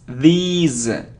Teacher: It isn't this, no, it's these. It's a long sound and the sound is z, these, okay?